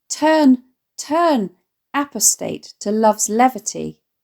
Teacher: seven of the 10 syllables in the line are stressed